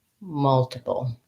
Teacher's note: i go to my dark l which may or may not have a little schwa before it